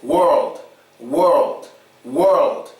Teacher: when you're saying world, your tongue is very important. It has to go from the bottom to the top of your mouth when pronouncing the L sound.